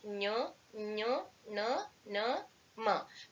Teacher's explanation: Consonants pronounced with the help of the nose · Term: ಅನುನಾಸಿಕಗಳು